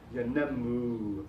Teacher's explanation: Now this verb is a very classical example of some Arabic rhythm in the pronunciation, yanammu. Although the accent falls on the second syllable, the third syllable is longer in duration. So it's yanammu.